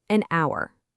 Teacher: the word starts with the letter H, which is a consonant, but you don't actually hear it, do you? The sound is our, which is a vowel sound.